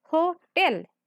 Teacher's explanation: we put pressure on second syllable right that's called stress